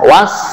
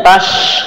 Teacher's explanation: Yang pertama sin tipis, ya, was, kemudian tash, nah, sinnya tebal di sini.